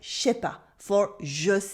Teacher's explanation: in spoken French, we almost always drop the N in negations